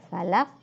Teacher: Qaf itu qalqalah, jadi harus mental.